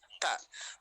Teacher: Coba huruf ta itu berarti ta. Ta, ujung lidah kita nempel ke gigi seri atas ya, belakang gigi seri atas